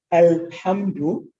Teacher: you hear that clearly there's no assimilation